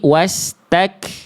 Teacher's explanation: Sifatnya namanya poin 1 hams. Mengalir nafas, tapi untuk huruf kaf berupa percikan saja, terpercik saja. Jadi jangan sampai dibaca wastakba, tapi wastak.